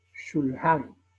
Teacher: cuando pronunciamos la palabra shulhan, la U es sumamente leve, levísima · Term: kutz